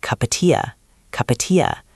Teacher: In real life, that sentence becomes one long sound. It sounds like cupatia, cupatia. The P sound at the end of cup moves over. The word of gets reduced.